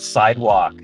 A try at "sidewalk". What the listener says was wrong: Say sidewalk. No. That L is so like you put that L in there.